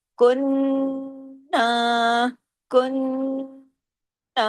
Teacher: نون پہ تشدید ہے، ڈبل نون ہے، اس لیے یہاں پہ غنہ ہوگا بڑا، دیر تک آواز ناک میں چھپے گی